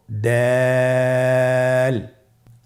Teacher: এ হরফটি উচ্চারণ করার সময় আমরা অবশ্যই তিন আলিফ টেনে পড়বো। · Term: দাল